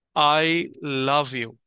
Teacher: তাহলে তুমি কোনটার উপরে এটা জোর দিবে? অবশ্যই লাভের উপরে, আই এর উপরে না, হচ্ছে আবার ইউ এর উপরেও না।